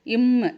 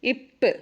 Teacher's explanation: இம்முனா உங்களுக்கு 2 உதடும் சேரும்.